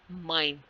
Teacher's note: and M is nasal stop